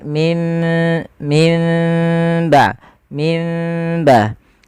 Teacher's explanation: Tidak seutuhnya ee mimnya tuh dirapatkan. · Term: furjah